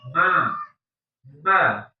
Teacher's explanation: mim sama Nun dia punya dua tempat mim bibir sama hidung